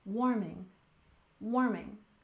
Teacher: warming we stress the first syllable